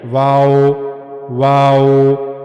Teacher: वाव के बारे में हमने पढ़ा कि दोनों होठों को गोल घुमाना है। लेकिन दोनों हंठ आपस में मिलने नहीं चाहिए। · دونوں ہونٹوں کو گول گھمانا ہے لیکن دونوں ہونٹ آپس میں ملنے نہیں چاہیے۔